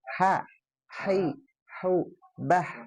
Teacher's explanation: Di tenggorokan bagian tengah ya. Tengah, H kecil.